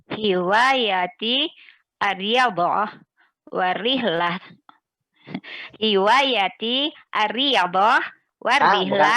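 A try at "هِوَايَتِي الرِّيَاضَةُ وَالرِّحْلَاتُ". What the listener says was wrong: Bukan ar-riyadhah, ya-nya panjang Ibu. Hiwayati ar-riyadhah warihlat. Ya, sebetulnya untuk kata rihlat ini bukan rihlah ya. Dia itu taknya tak terbuka. bacanya warihlat, warihlat, tak ya. Aryadah, warihlat, wal qiraatu aidan.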